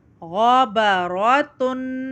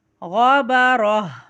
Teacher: یہاں جو گول تا ہوتی ہے، گول تا کے اوپر جب دو زیر کی تنوین اور دو پیش کی تنوین لگ جاتی ہے تو اس کو ہم وقف کرتے وقت ہا کی آواز سے بدل کے پڑھتے ہیں